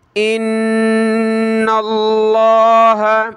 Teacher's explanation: یہاں نون پہ زبر ہے تو لفظ اللہ کو بڑا کر کے پڑھیں گے